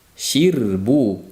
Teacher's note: Bu yerda r ingichka qilamiz, oldi kasra bo'lganligi uchun.